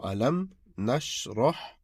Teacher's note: ra before ha is a sound which you make with a round shaped mouth